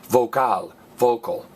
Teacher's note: last vowel gets stressed